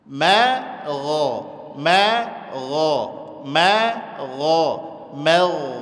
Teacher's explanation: mimnya tipis gnya tebal